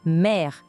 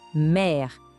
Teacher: Ele abre o som, criando um E, bem parecido com o nosso E de pé.